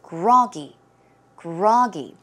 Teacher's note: So the stress goes on the first syllable.